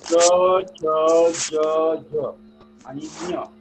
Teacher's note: आपली जीभ जी आहे ती काय त्या आपल्या टाळूला लागली जाते म्हणून त्याला तालव्य म्हणतो. तर बघा या च चा जो उच्चार केला तर जिभेचा हे होतं बघा, च च ज ज आणि ञ.